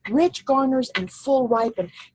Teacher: you feel like you have to have two accented syllables right next to each other